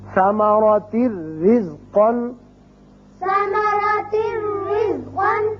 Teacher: اسی طرح را تنوین کی وجہ سے ایک زیر پڑی جائے گی اور صرف را ہوگا، یہاں نون کی آواز نہیں آئے گی